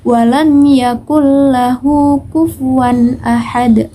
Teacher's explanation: memasukkan huruf pertama ke dalam huruf berikutnya dengan tidak dengung atau tidak disertai dengan suara yang demung kemudian huruf idgam bilagunnah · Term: idgham bilagunnah